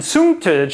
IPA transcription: suŋ.tʌdʒ